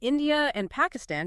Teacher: But in these accents, if a word ends in certain vowel sounds like the ran idea or desen spa and the next word starts with any vowel sound like of or is then a little r sound often gets inserted between them even if there's no r in the spelling of the first word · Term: intrusive R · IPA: /ˈɪndiə.r.ænd/